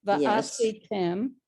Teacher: that's an ayin and it's silent